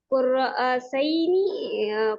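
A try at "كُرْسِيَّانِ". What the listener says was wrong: Sorry, कुर्रा कुर्सी है ना भाई, तो कुर्रा कैसे हो जाएगा, कुर्सी। कुर्सी याने। कुर्सी याने। और लगाते हैं लास्ट में।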